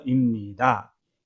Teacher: 니가 비음이기 때문에 입이 임으로 바뀝니다.